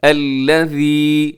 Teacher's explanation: سب سے پہلے الذی، یہاں ذال ہے اور ذال کو نرمی سے پڑھا جاتا ہے، اسے آپ نے زا نہیں پڑھنا، ذال، ذال بغیر سیٹی کے نرمی سے ادا ہوتا ہے